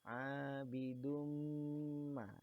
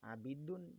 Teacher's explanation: Kemudian digunahkan atau didengungkan. Tahan ya, panjangnya 2 harokat atau 1 alif ya. Abidum ma. Jadi jangan baca abidun ya, atau abidum terlalu panjang gitu. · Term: idgham bi gunnah